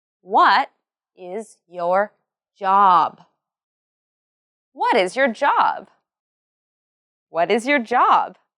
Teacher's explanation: remember this question has a falling tone and the words what and job are emphasized